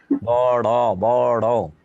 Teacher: তারণজাত বর্ণ কেন? তাড়না দেয়, জিহ্বাটা ঘোরানো দেয়